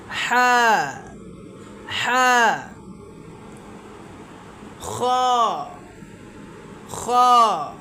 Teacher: হা এর উচ্চারণটা হলো গলা আমরা যে কন্ঠনালী আছে এটার মাঝখান থেকে একটু চিপা দি